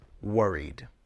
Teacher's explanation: All vowel sounds are voiced, so the ed ending is pronounced d.